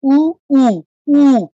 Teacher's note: আর বাতাস বাড়ি দেয় কখন, যখন আমি স্বরবর্ণ উচ্চারণ করি, যেমন ওষ্ঠবর্ণ কি উ, উ, উ, দেখুন ঠোঁটটাকে আমার গোল করতে হচ্ছে, ঠোঁটটাকে গোল করে আমি বাতাসটা বের করছি বলে এরকম উ আওয়াজ হচ্ছে,